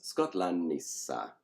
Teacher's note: the NT has become a double n and that happens regularly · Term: consonant mutation